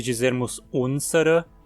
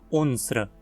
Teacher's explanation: ao incluirmos a terminação, o e antes do r desaparece. Em vez de dizermos unsere, dizemos só unsra.